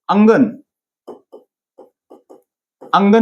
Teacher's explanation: ह्याचा उच्चार बघा थोडासा कसा होतोय, नाकातून होते, अनुनासिक. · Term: अनुस्वार